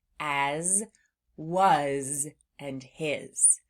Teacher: they end in what sounds like a Z sound, but it's actually being spelled with an S